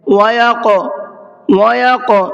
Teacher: قلقلہ یعنی تھوڑا سا آواز کو ڈبل کر کے پڑھیں گے، جیسے وَيَقْ، وَيَقْ، اس طریقے سے آواز کو ڈبل کریں گے۔